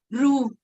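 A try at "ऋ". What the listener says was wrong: It is not Ru. It is R. R. Not Refa, not Ru. Okay, it should be R.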